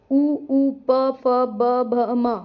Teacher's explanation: जीभ के संयोग से जो हमारे होंठ हैं वो मिल जाते हैं। इन्हें ओष्ठय वर्ण कहते हैं।